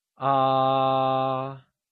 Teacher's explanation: The first tone, denoted by a high bar, starts at a high level and remains constant at that level. It is the same as saying ah without a change in voice.